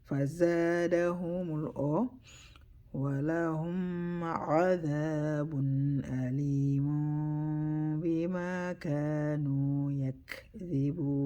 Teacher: You hear the buzzing sound for za, because za is a letters of the they call the whistling letters, but za is more like a buzzing sound.